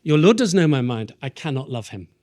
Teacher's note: an 11-syllable line, as you may know, is known as, God help us, a feminine ending, a phrase I never want to use again, because the final syllable is unstressed